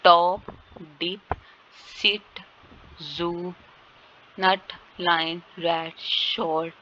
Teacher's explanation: blade of the tongue touch the alveolar ridge or teeth ridge behind the top front teeth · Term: alveolar sound